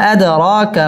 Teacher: আদ র পুর হবে এবং র 1 আলিফ টেনে পড়তে হবে মধ্যে তাবাই।